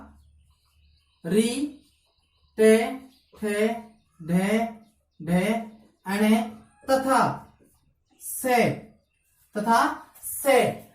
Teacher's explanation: तो अपने मूर्धा की परिभाषा क्या रहेगी कि जिन वर्णों के उच्चारण में जीवा की जो नोक होती है वो मुख के अंदर किसी स्पर्श करेगी, मूर्धा स्थान को स्पर्श करती है, तो उन्हें क्या कहा जाता है मूर्धन्य वर्ण कहा जाता है।